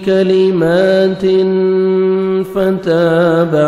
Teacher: تنوین کے بعد 15 لیٹرز میں سے فا ہے. یہاں پہ آپ نے اخفا کرنا ہے